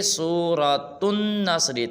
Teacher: تا کو نون کے ساتھ ملائیں گے